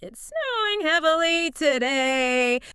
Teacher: But if I swap that period for a question mark, the whole melody changes, right? The You- pitch of my voice just naturally rises at the end